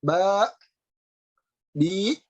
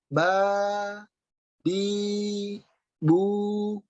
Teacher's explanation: Kemudian po, ya, ini artinya yang terpenting adalah pengucapannya tidak melalui hidung, dia hanya antara rongga tenggorokan dan rongga mulut, ya. Kemudian tidak mentok di tenggorokan, ba, bi, nah, tidak mentok ya, tapi lepas, lil hawa tantahi, habis di udara, ba, bi, bu, lepas, gitu ya. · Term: huruf mad